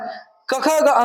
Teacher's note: क ख ग अंग यानी क वर्ग का उच्चारण स्थान कंठ होता है।